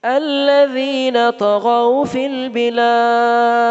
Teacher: ہر اینڈ پر جو ہے دال آ رہی ہے قلقلہ ہو رہا ہے